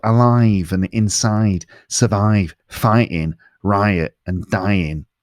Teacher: the I in words like alive, inside, survive, fighting, riot, and dying sounds more nasal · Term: nasal sounds